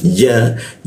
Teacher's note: Huruf ya di tengah lidah dia